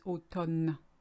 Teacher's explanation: L'automne, interestingly, it's got MN just like English, but whereas in English you say autumn, you actually say the M. We ignore the M and we say the N, so it's automne.